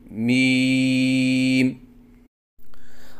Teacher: پڑھنے کا طریقہ: میم کی ادائیگی کے وقت دونوں ہونٹوں کی خشکی والے حصے کو ملائیں اور اس کے بعد ہونٹوں کو الگ کریں اور 3 الف کے برابر لمبا کر کے پڑھیں